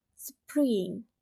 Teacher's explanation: The coda is ng. That's the ng sound at the end of the word. It's a single nasal consonant sound and is closest the syllable.